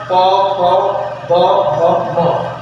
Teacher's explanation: दोनों ओठों के स्पर्श से, इसमें जीभ का कोई काम नहीं होता है। दोनों ओठों के स्पर्श से जो बोले जाने वाले वर्ण होते हैं इनको हम पोस्ट वर्ग में रखते हैं। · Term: प वर्ग